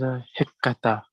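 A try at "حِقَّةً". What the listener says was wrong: Hiqqatan. Hiqqatan with a noon at the end.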